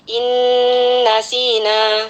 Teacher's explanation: jangan lupa kita dengungkan dengan kadar gunnah yang akmal, yang sempurna ya, karena nun bertasdid itu gunnah musyaddadah. Jadi kita baca innasina, sin berharakat kasrah, kemudian ada ya sukun, maka mad tabi'i kita baca panjang 2 harkat.